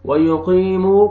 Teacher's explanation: قاف کو آپ نے موٹا کر کے پڑھنا ہے اور یا مد ہے، یا جزم سے پہلے زیر ہے، قاف کو آپ نے کھینچنا بھی ہے